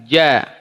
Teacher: gym tidak usah dibaca Jim di fathah bukan langsung saja ya Ini dari tengah lidah ketemu langit-langit